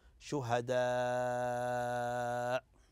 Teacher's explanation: تمد متصل لان الهمز والمد في كلمه واحده واذا وقفت عليها هذا المد يمد ست حركات اذا كان متطرفه او الهمزه متطرفه